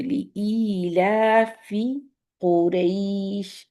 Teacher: قاف کی دمہ ہم نے راؤنڈ کرنی،